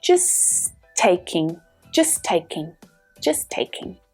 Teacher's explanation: hear how the two words actually come together. That T sound is only pronounced once.